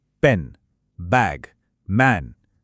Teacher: ये वो ध्वनियां हैं जो दोनों होंठों को एक साथ लाकर बनती हैं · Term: बायलेबियल ध्वनियां